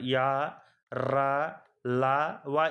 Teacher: పైకి టచ్ అయ్యేది దాన్ని అంగిలి అంటారు య ర ల వ ఇవన్నీ అంగిలి సహాయంతో పలుకుతాం కాబట్టి వీటిల్ని అంతస్థములు అంటారు